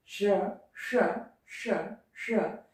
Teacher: मूर्धन्य यानी जब जीभ ऊपर वाले, दांत के ऊपर वाले कठोर जगह को, स्थान को छूती है तो उसी को हम मूर्धन्य या मूर्धा कहते हैं।